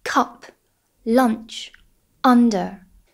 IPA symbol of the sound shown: ʌ